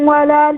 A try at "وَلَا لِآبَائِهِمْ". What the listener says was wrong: آ کو ذرا کھینچے، لآبائہم،